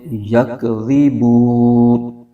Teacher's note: آگے یکذبون، بو میں واو مدہ ہو رہا ہے، واو ساکن سے پہلے پیش ہے، تو واو مدہ ہو رہا ہے، اس کو ایک الف کھینچیں گے۔ اور آگے نون پر زبر ہے، اور آگے آیت ختم ہو رہی ہے، تو یہاں پر وقف کریں گے۔